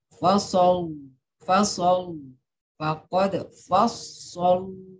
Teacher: Tapi tetap walaupun tarkik, ujung lidahnya tetap ke langit-langit ya. Bukan ujung lidahnya ke gigi.